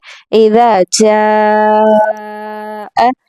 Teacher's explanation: झीम के ऊपर मोटी मद है और इस मद को तकरीबन 4 से 5 हरूफ के बराबर हम खींचेंगे। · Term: मद्दे ममदूदा